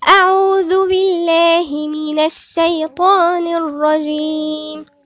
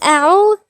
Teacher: الذال نطلع لساننا في الذال. الذال من الحروف اللثوية، الذال والثاء والظاء، 3 حروف دول حروف لثوية.